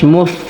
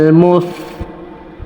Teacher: ফাতে অবশ্যই বাতাস জারি রাখতে হবে